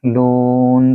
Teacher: لو کو لمبا کریں 2 سیکنڈ کے لیے کیونکہ یہاں واو مد ہے اور یہاں وقف تام.